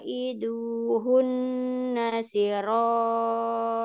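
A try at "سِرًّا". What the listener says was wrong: Siro, ada tasdid siro.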